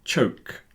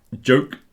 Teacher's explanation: the ch, the last one, is an unvoiced version of the j on the first one